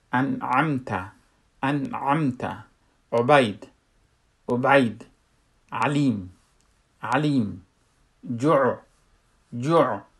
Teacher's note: عین از اونجا خروج میشه، از وسط حلق، اما نرم بدون گرفتگی یا بدون خفه شدن.